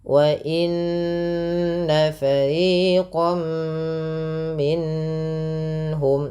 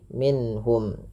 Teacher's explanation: suara nunnya harus jelas tanpa ditahan, tanpa ada penahanan. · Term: izhar halqi